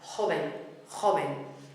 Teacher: Remember what we said about our consonants, the ch for the J and the very soft v